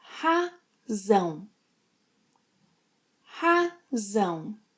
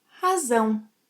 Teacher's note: You need to make a strong Z sound, as in zebra, and not an S sound.